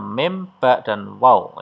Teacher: Yang ketiga adalah makhraj safawi, dua buah bibir, ada mim, ba, dan waw